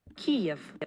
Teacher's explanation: the Kyiv pronunciation, in which there's clear aspiration, about 83 milliseconds of aspiration